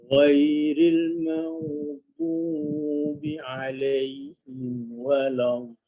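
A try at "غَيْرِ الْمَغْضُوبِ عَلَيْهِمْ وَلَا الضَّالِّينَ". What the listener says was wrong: Okey, huruf dad baris depan itu kurang jelas sikit, tapi dah okey insya-Allah. Dia tak ada macam bertukar huruf ke hampir kepada huruf dal, tidak.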